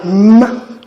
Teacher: The upper lip is pressed against the lower one for it to be articulated, as we have in m. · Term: bilabial nasal